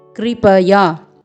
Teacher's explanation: क में री का स्वर है, क्री, र का स्वर नहीं है।